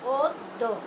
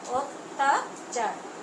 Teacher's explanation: শব্দের আদ্য অয়ের পরে জফলাযুক্ত ব্যঞ্জন বর্ণ থাকলে সেক্ষেত্রে অয়ের উচ্চারণ প্রায়শ ওকারের মতো হয়